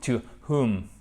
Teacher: on ne prononce pas le W et on fait bien notre H ici